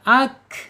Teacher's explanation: Kaf ini harus mengalir dialirkan ketika dia sukun. Ak ak ak enggak boleh ak ak ak tapi harus di ee lepas udaranya dialirkan ak gitu ya. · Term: huruf kaf